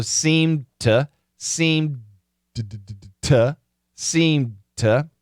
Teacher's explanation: stop seemed to and then I switch to a t so I'm going into the D so there's vibration going to the D but then it switches over to the T